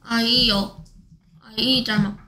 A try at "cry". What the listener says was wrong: 아이오 아닙니다 아이 짤막 중에서 아이 그래서 다 합치니까